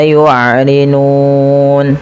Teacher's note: Karena nunnya kita matikan dan kita wakafkan maka harus kita sukunkan. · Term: sukun arid